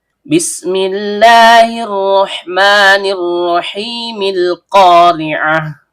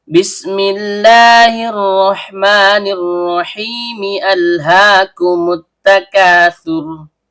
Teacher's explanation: cara bacanya khusus pada surah Al-Qari'ah ini kita lewati alifnya atau hamzah wasolnya. Berbeda ketika pada surah At-Takatsur kita tetap membaca hamzah qata'-nya.